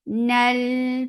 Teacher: Nal for fatha open jaws attach with lam. Lam will get sifa of tawassut, and tawassut is medium flow of sound.